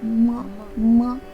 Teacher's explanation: अब हम प वर्ग के अंतिम वर्ण का यानी कि पांचवे वर्ण का उच्चारण करेंगे। तो इसका उच्चारण दोनों ओष्ठ और नासिका से होता है, यानी कि नाक से होता है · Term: अनुनासिक वर्ण